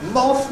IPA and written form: mɒθ (Moth)